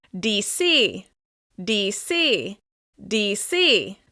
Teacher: Locals are much more likely to refer to the nation's capital as DC, DC, with stress on the letter C